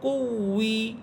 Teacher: কাফ ওয়াওকে ধরবে, ঠোঁট গোল করে ফেলবেন। যখনই কাফ ওয়াওকে ধরতেছে তখনই গোল করবেন।